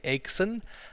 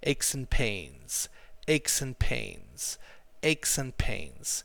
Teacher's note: Okay, so that's pronounced aches. Aches and becomes compressed together, so you say acheson, and then you emphasize the word pains. So aches and pains, aches and pains, aches and pains.